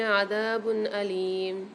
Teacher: اچھا باقی اوپر جو دو پیش آ رہے ہیں یہاں پر قاعدہ ہو رہا ہے اظہار حلقی کا، دو پیش کی تنوین کے بعد یہاں پر ہم غنہ نہیں کریں گے، اظہار کر کے پڑھیں گے